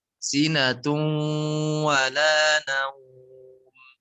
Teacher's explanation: Sinatung, tahan dulu. Idgham bi gunnah 3 harokat.